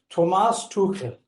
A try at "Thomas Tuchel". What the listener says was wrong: Yes, I think a little bit too much emphasis on the third syllable in the first name. Thomas Tuchel.